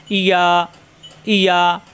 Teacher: জিহ্বার মাঝখানে উপরে তালুতে চাপ দিয়ে